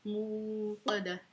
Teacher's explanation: اکثر لوگ یہاں پہ موقدہ پڑھ لیتے ہیں، تو یہ واو مدہ ہے، ٹھیک ہے، حمزہ نہیں ہے، واو مدہ ہے، اس کو ہم نے کھینچ کے پڑھنا ہے، موقدہ، ٹھیک ہے، موٹی کاف ہے، اس کو موٹا پڑھنا ہے، اور گول تا ہے تو ہم اس کو ہا ساکن بنا کے وقف کر دیں گے، نار اللہ الموقدہ، ٹھیک ہے۔